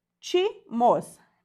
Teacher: Última, penúltima, antepenúltima. Antepenúltima sílaba mais forte, novamente uma proparoxítona.